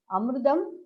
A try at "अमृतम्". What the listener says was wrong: No, not amruta. It is amrita. Amritam, amrite, amritani. You see that what mistake you do?